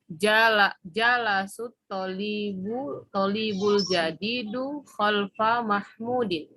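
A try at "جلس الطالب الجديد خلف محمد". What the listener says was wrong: Itu jalasa kan Bu atau jalasu? Jalasa ya. Nggak mungkin domah Bu ya. Nah, itu Mahmudin atau apa Bu? Mahmud atau Muhammad itu Bu? Iya, Muhammadin ya Bu ya. Kalau Mahmud setelah mimnya ada wawu ya. Mahmudun gitu. Jadi khalfa Muhammadin.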